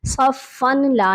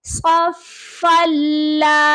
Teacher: ملانے کا مطلب ادغام کرنا ہے، ٹھیک ہے، صرف آپ نے یہاں پر فا کو لام کے ساتھ ملا دینا ہے، لیکن یہ آواز آپ کی جو ہے ناک میں نہیں جانی چاہیے، یعنی کہ غنہ نہیں ہونا چاہیے۔ صفن لا نہیں آپ نے پڑھنا، ہم نے ڈائریکٹ پڑھنا ہے صفلا، ٹھیک ہے، فا کو لام کے ساتھ ملا دینا ہے، پھر ہم نے اس والے الف کو نہیں پڑھنا۔